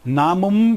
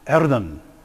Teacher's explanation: So here you see the merger of the final nasals to alveolar nasals.